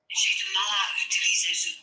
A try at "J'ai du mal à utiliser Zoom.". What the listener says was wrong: Can you not go utiliser? Can you just make it all smooth? It's French. J'ai du mal à utiliser Zoom.